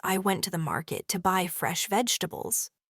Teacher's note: the stressed words are went market, buy fresh and vegetables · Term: sentence stress